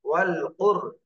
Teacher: র সাকিন ডানে পেশ, র মোটা করে পড়তে হবে